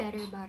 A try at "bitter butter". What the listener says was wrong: bitter, not better. it's bitter.